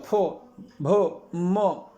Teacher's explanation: पा बोलते हैं हमारे ओष्ठ, मतलब ओठ, दोनों बंद होते हैं